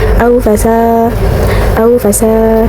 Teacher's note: alif mati, sebelumnya ada huruf yang berbaris fathah. Cara bacanya dibaca panjang 2 harokat. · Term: matobi'i